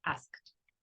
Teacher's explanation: En lugar de decir asked, perdón, yo voy a hacer un sonido de T, asked.